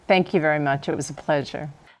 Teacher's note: that's a falling intonation pattern and it indicates confidence and certainty · Do you hear how the music or intonation falls after the final stressed syllable?